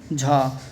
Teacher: तालव्य महाप्राण घोष व्यंजन वर्ण का उदाहरण कौन सा हो जाएगा